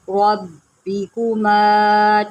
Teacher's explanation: فَبِأَيِّ آلائی رَبِّكُمَا، را کے اوپر زبر ہے، اس کو موٹا کر کے پڑھیں